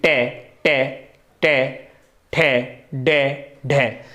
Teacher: चे, चे, चे, छे, जे, तालु, तालु से जीभ टच होती है तो ये तालु से आती है। मूर्धा, तालु से आगे थोड़ी सी जीभ सटे टच करेगी। टे, टे, टे, ठे, डे, ढे।